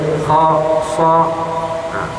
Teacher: Kemudian kalau di dalam istilah tajwid di sini dia terangkan, yaitu sebahagian besar dari pangkal lidah terangkat ke langit-langit, seperti huruf kha, so. Ini berkenaan tentang sifat ataupun kita panggil gabungan antara sifat dengan makhraj huruf.